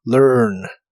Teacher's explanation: La A de esta palabra no se pronuncia, y pronuncias esta palabra con tu lengua retraída hacia atrás